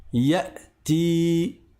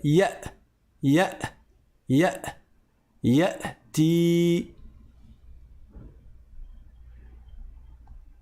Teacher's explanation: Donc vous voyez, il y a le ya, on entend une voyelle, un son qui sort, et au moment où je prononce la hamza, les cordes vocales au fond de la gorge, elles se referment et elles bloquent toute arrivée d'air ou de son